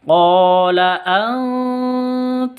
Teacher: mim mati bertemu syin ini jelas bacanya terang karena izhar Safawi